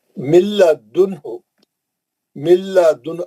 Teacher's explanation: अब नून गायब हो गया, नून इदगाम कर लिया, सख्ती से मिल गया, सीधा लाम में जाएंगे